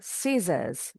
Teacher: Yang penting S-nya yang di belakang bunyinya seperti huruf Z. Jadi bukan S, bukan scissors, tapi scissors.